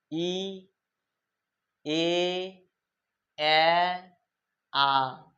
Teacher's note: ঠোঁটটা আস্তে আস্তে কি বলতো প্রসারিত হচ্ছে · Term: প্রসারিত স্বর